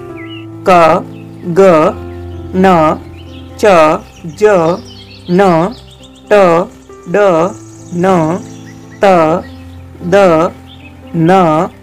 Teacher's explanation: ऐसे वर्ण जिनके उच्चारण में श्वास वायु मुख विवर से कम मात्रा में बाहर निकलती है, वे अल्पप्राण वर्ण कहे जाते हैं।